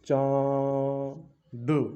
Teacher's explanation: जब नाक और मुंह दोनों से ध्वनि निकलेगी तब हमारा होगा अनुनासिक